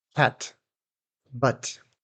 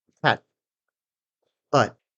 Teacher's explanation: There's no release. My tongue just stays up there in the gum ridge. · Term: unreleased t or held t